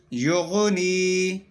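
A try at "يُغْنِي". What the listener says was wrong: یغنی. کیسا آپ نا غن کے اوپر کلکلا کرے, غن کے اوپر کلکلا نہیں کرنا.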